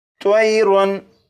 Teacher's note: तनवीन के बाद हमज़ा है और हमज़ा हरूफ़े हल्की में से है, इसलिए तनवीन पर गुन्ना नहीं करेंगे और इसे पढ़ेंगे त्वयरुन طیرن، اب اس لفظ کو پڑھیں گے اور اس لفظ میں آپ دیکھیں یہاں پر الف سے پہلے زبر ہے، لہٰذا یہ الف مدہ بن گیا اور الف مدہ کو ایک الف کے برابر کھینچ کر پڑھتے ہیں۔